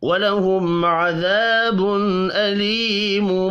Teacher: میم ساکن کے بعد عین ہے، اظہار شفوی ہوگا، غنہ نہیں کرنا · تنوین کے بعد حمزہ ہے، اظہار حلقی ہوگا، غنہ نہیں کرنا